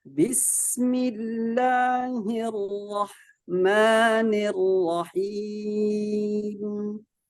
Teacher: ingat sinnya jangan dilepas dulu Mas ya. Ditahan sedikit karena dia punya sifat rakhawah.